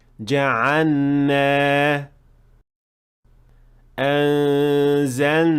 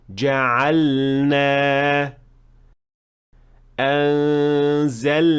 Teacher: And this happens because the lam and noon are pronounced from two spots that are very close to each other. But you should definitely pronounce the lam clearly and with idhar before moving on to the noon